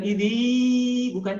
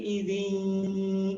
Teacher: Yauma idzin, hati-hati warnanya merah, leburkan ke huruf ya, masukkan ke rongga hidung, tahan dua ketukan.